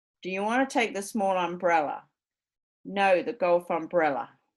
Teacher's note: they instead of putting the pitch on the contrast they just shift it all the way to the end regardless of whether there's a contrast or not so we'll we'll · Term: heavy-end stress